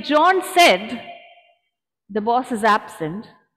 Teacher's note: But if I say John said, the boss is absent, my pause is after said, which means John is speaking